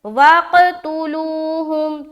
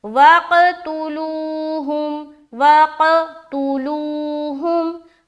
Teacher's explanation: تو یہاں پر ہم پڑھ رہے وَقْتُلُوهُمْ، تا پیش تو، لام وا پیش لو، ہا میم پیش ہم، کھینچنا صرف لو میں ہے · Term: واو مدہ